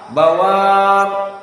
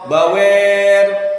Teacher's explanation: Maka al-imalah kubra seperti al-Kisai, daral bawar menjadi daral bawir.